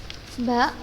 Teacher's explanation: Ba, makhrajnya dari asyafatain atau kedua bibir. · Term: huruf ba